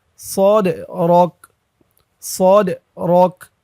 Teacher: এখানে ওকফ করলে কাফের উপরে জবরটা সাকিন হয়ে যাবে উচ্চারণ হবে সদ রক সদ রক এমন উচ্চারণ হবে আলাম নাশরহলাকা